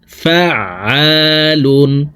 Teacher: আইন হরফকে হলকের মধ্যখান থেকে উচ্চারণ করব, কারণ আইনের মাখরাজ হলকের মধ্যখান থেকে হবে।